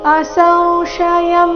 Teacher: ಶ್ಲೋಕಕ್ಕೂ ಮೊದಲಿದೆ ಶ್ರೀ ಭಗವಾನುವಾಚ ಅಸಂಶಯಂ. ಸ ನಂತರ ಬಂದಿರೋ ಅನುಸ್ವಾರದ ಉಚ್ಚಾರಣೆ ಬಾಯಿ ಮತ್ತು ಮೂಗಿನಿಂದ ಈ ರೀತಿ ಉಚ್ಚಾರಣೆ ಬರಬೇಕು